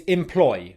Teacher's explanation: It's spelt with the letter 'E,' but it's pronounced with the /ɪ/ vowel sound.